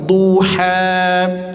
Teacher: Baru setelah itu huruf do-nya ditebalkan sambil didammahkan, memonyongkan kedua bibir